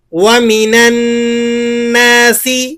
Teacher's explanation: نون مشدد ہے، غنّے کے ساتھ ادا کریں گے.